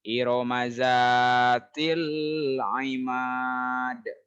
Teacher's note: Iromaza. Iroma pendek semua. Za-nya panjang.